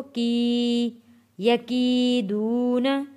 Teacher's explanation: یا ساکن سے پہلے زیر ہے، کاف کے نیچے زیر ہے، کی حروف مدہ ہے، کھینچ کر پڑھیں گے اس کو، کی یکیدون، واو ساکن سے پہلے پیش ہے، یہ بھی حروف مدہ ہے، کھینچ کر پڑھنا ہے ہم نے۔